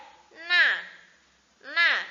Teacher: Kemudian di sampingnya ada ujung lidah ditekan sedikit lebih ke atas dari makhraj la